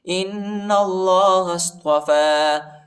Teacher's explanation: إِنَّ اللَّهَ اصْطَفَى، إِنَّ اللَّهَ اصْطَفَى، إِنَّ اللَّهَ اصْطَفَى، یا نہیں پڑھا جاتا، یا پر حرکت نہیں ہے، ٹھیک ہے، اور فا پر کھڑا زبر ہے، اس کو ایک الف کی مقدار تک کھینچیں گے